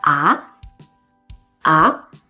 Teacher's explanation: ah can be used to express surprise, especially as something that's hard to believe. In this case, it is the second rising tone.